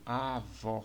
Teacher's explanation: vó é a sílaba mais forte né sílaba tônica e Aqui nós temos um acento gráfico que